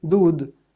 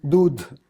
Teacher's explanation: became unaspirated and the preceding vowel received high tone